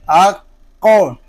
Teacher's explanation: یہ قوف حروف قلقلہ میں سے ہے، اس کو جماؤں کے ساتھ ادا کریں گے، اور یہ حروف مستعلیہ میں سے بھی ہے، اس کو پر بھی پڑھیں گے